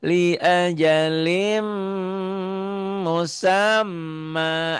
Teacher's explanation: Nih kulli yajri liajalim liajalim musamma liajalim jadi idgam biguna masuk ke sini linnya jadi lim li ditahan ya karena idgam bigunah